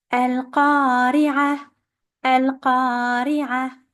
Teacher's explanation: The qaf here with the fatha is followed by an alif. This alif is there to elongate the fatha and we have to do so for 2 counts.